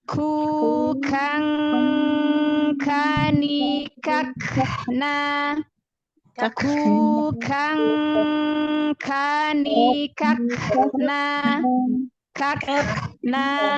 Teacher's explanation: Ya, kalau setelahnya ketemu huruf tipis, ikhfanya tipis. Tetapi karena kaf ini adalah dari belakang, dari pangkal lidah, maka tentu nun sukunnya kan lebih tidak terdengar